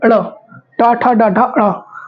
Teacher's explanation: जीभ जो मुड़ के निकल रहे, तो सारी लेटर्स उसी से प्रोनाउंस हो रहे हैं, इसलिए इसको मूर्धा बोलते हैं, क्योंकि मुड़ा हुआ है ना।